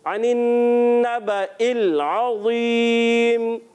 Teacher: आइन की अदायगी क्लियर रखनी है, हलक के दरमियान वाले हिस्से से वो।